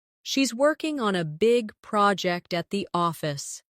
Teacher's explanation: Stress working big project and office.